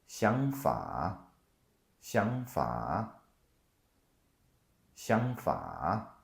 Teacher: So the first third tone becomes a second tone.